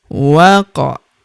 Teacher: Huruf wa langsung lompat masuk ke huruf qaf yang berharokat sukun, kita pantulkan atau kita qalqalahkan.